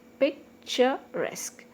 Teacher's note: So resque is one syllable, that's why the stress is on the last syllable.